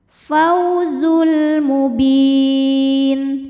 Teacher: dilembutkan atau dilunakan alfauzul kemudian ada hukum alif lam qamariyah karena alif lam menghadapi huruf qamariah yaitu mim maka lam dibaca jelas